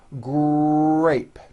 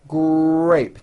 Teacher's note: in the word grape, the R sound is stronger and you even hear it more than the G sound. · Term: R blends